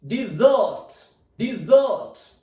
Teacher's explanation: Now look, D, then I, then primary stress is there, then Z, O, T. Stress is on second syllable.